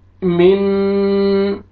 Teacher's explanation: ये देखिए नून साकिन के बाद शीन है हरूफ इख्फा में से, तो यहाँ पे आपने इख्फा करना है, नाक में आवाज लेके जाएंगे